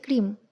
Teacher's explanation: আমরা ভেঙে উচ্চারণ করছি, একবার বলছি আইস আরেকবার বলছি ক্রিম, অর্থাৎ আমাদের এখানে মাঝখানে একটা ভাঙন হলো, দুটো পার্ট হলো। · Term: স্যালাবেল